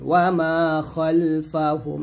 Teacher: ওয়া মিম আলিফ জবর মা একলে টান দিবেন ওয়া মা খালফাহুম এখানে খাল না বলে খল বলবেন